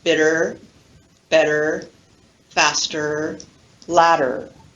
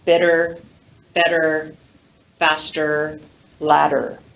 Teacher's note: the R-colored schwa that occurs in words that have an ER ending